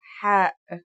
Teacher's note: The closest English counterpart to the sound is H. The only difference is that it comes from a point deeper down in your throat